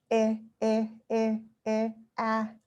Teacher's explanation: a sound that's sort of in the middle at the front, the E sound